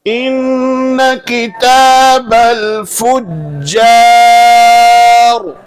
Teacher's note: کہاں را ساکن سے پہلے زیر کہاں ہے؟ را کے نیچے زیر اس لیے را باریک ہوگی